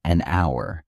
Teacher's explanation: the H is silent and it starts with a vowel sound